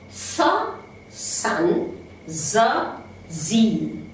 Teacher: We have 2 alveolar fricatives